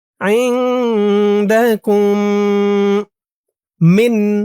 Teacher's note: মিম সাকিনে ইদগাম গুন্না হবে, এটাকে ইদগামে শাফাওয়ি বলে।